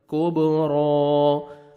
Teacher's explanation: کاف کو باریک پڑھ کے با ساکن کے ساتھ ملائیں گے